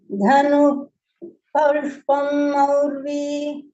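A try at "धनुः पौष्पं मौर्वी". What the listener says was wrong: There is a Visargaha there, so it has to be Fa. Dhanuf Paushpam.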